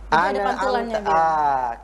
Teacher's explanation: Tapi kalau di sini bukan pada huruf qalqalah, mestinya tidak mantul, tapi ini dimantulkan, maka ada istilah lain namanya tawalud.